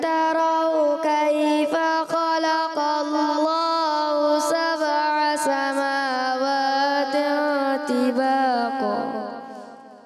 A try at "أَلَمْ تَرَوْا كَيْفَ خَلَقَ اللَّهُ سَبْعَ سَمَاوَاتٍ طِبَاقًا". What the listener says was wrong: اچھی کوشش تو کو آپ نے موٹا رکھنا ہے طباقا ٹھیک ہے ألم تروا كيف خلق الله سبع سماوات طباقا